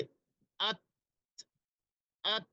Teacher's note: হলো তার যেই জায়গা যেখান থেকে উচ্চারণ হয় সেই জায়গাটি হলো জিহ্বার আগা এবং আমাদের যে দুই দাঁত রয়েছে উপরের সেই দুই দাঁতের গোড়াতে জিহ্বার আগাটা লাগাতে হবে